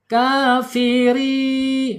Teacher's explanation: ro kasrnya ketemu ya sukun ya panjangnya dua harakat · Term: mad thabi'i